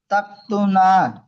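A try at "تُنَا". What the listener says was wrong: তাক কেন, তা তু না।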